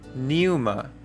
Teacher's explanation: The P, or the pi right here, becomes silent, and so we have pneuma.